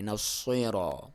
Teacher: آپ صاد پڑھیں گے، صاد کو ہمیشہ موٹا پڑھا جاتا ہے، صاد جب آپ پڑھیں گے تو آپ کی زبان کی نوک تو اب نیچے والے دانتوں کو ہی لگے گی، لیکن آپ منہ کو تھوڑا سا بھر کے پڑھیں گے